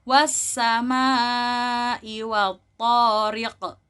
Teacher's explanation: Dan di terakhirnya di situ ada qaf yang mana qaf ini termasuk dari huruf-huruf qalqalah. Maka anak-anak jika ingin mewakofkan atau berhenti di ayat pertama harus memantul.